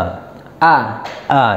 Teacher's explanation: Pangkal tenggorokan berarti tenggorokan yang paling bawah itu ada ha sama alif atau hamzah.